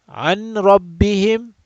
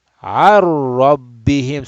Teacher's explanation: So this noon is gone. Noon is gone. There's no nasal sound at all. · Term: idgham bila gunna